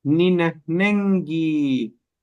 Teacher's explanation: La K después de una N suena a G.